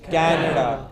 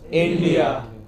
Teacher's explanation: names of countries where englishmen emphasize stress the initial part